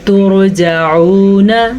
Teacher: را ساکن ہے اور اس سے پہلے پیش ہے تو را پر پڑھی